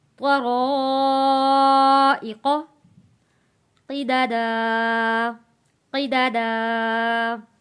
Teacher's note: حمزہ کے نیچے زیر ہے ای، قاف نقطے والا قاف موٹا پڑھا جائے گا